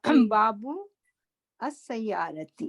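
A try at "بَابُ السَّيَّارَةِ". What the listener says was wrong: نہیں توڑ کے نہیں پڑھنا، ہم نے حمزۃ الوصل پڑھ لیا نا.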